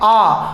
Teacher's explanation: उच्चारण करते समय मुख बहुत ज्यादा खुल रहा है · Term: विवृत स्वर